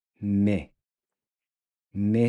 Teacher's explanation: You want to keep the E nice and closed.